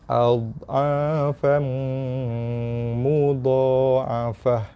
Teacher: Jangan dikeraskan do. Kalau kita keraskan do, mudah jadi lantunan. Bila dah terlantun bunyi do mati, dah jadi qalqalah dah.